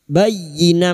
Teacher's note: Membalik seperti bertemu mim namun siap membunyikan huruf ba dan mendengung selama 3 harakat. Bayyinah masuk pada huruf ya, hanya masuk tanpa ditahan lama-lama. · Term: iklab